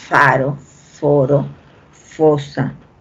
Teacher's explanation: el labio inferior va hacia los dientes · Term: labio dental